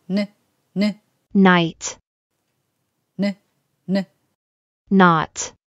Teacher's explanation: クになります。クックケーキ。こっちの有声音の方がちょっと難しいかもしれません。クからそのまんま音を出していきます。日本語のグにならないようにクと同じ位置で音を出してみましょう。喉の奥意識してくださいね。クからいきます。クックグッグッ。Good。舌の先っちょを、ベロの先っちょを上の歯の裏の歯茎につけてから急に弾くように離します。Today。同じ口の形でここからDo。さあ、ここまで来たらあともうちょっと、残りはたった3つです。頑張って。口を少しだけ開けましょう。 舌の先は上の歯茎につけてください。鼻からぬって声を出してみてください